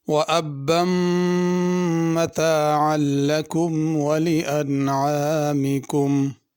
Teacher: لکم میں اور انعامکم میں چھوٹا کاف ہے، اس کو باریک کاف ہی پڑھنا · وَأَبًّا مَتَاعًا لَكُمْ وَلِأَنْعَامِكُمْ۔ متاعاً میں عین ہے، انعام میں بھی عین ہے، اس کا خیال کرنا حمزہ سے تبدیل نہ ہو جائے